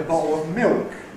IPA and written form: ˈbɒʔo əv ˈmɪok (bottle of milk)